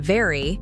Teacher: your bottom lip touches your upper teeth